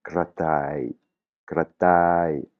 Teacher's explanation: en thaï, le re n'existe pas, c'est un R roulé, comme je le prononce, mais vous pouvez le prononcer comme un L si vous n'arrivez pas à rouler le R.